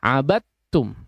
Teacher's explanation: langsung dimasukkan kepada huruf ta jadi tidak ada dalnya ya tidak dibaca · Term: idgham